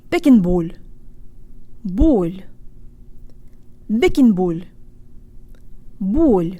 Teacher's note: You've just said a perfect soft L and the first half of our word. Make sure to protrude your lips so you get a nice full O sound